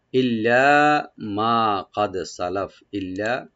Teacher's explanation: লামটাকে double করে একালে টানবেন